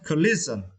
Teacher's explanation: You need to emphasize or stress the second syllable.